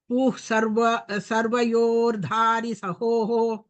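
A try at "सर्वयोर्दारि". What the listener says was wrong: दारि अल्पप्राण महाप्राण, you are telling महाप्राण. सर्वयोर्धारि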